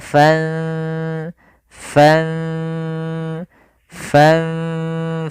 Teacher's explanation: fanfudu kemudian padafal fanfudu di sini ada lafal ikhfa yaitu Fan ada bacaan Ikhfa yaitu disamarkan nunnya ke huruf Fa